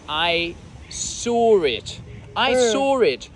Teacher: You pronounce an R, which obviously doesn't exist, right? It's not written. It's something you say.